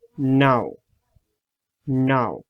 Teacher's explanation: That's a nasal sound. You have to use your tongue tip and alveolar ridge.